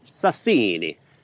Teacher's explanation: Emphasis on the second syllable.